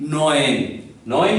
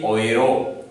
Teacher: This is E and this is U. These two vowels, when come together, they create a special sound, and that is oi, oi. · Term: German diphthong